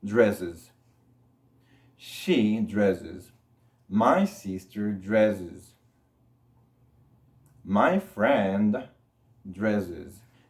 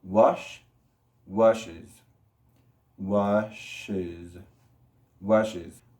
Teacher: se le agrega una sílaba extra. Y en este caso va a tener ese sonido como de Z. Es. Entonces, dress se convierte en dresses.